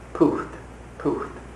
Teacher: Notice the little breath at the end.